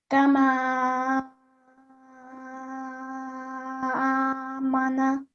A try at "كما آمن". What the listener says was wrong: Okay, so that was a bit too long. Just 3 to 5 seconds is enough.